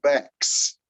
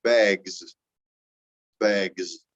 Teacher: if S comes after a voiced sound, it changes to a Z.